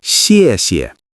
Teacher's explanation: Notice the falling tone repeated twice.